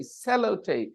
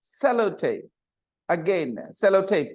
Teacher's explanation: Sellotape, stress on the first syllable. Sellotape, again, sellotape, put this in the third column.